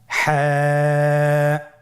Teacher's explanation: হা হরফটি উচ্চারিত হবে কন্ঠনারীর মধ্যখান হতে। গলা চিপে ধরে আপনি উচ্চারণ করুন।